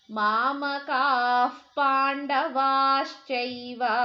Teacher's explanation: ಅಲ್ಲಿ ಮುಂದಿನ ಅಕ್ಷರ ವಿಸರ್ಗದ ನಂತರ ಪ ಅಕ್ಷರ ಇದೆ ಹಾಗಾಗಿ ಎಫ್ ಅಥವಾ ಅರ್ಧಪ ಪ ಸೌಂಡ್ ಬರಬೇಕು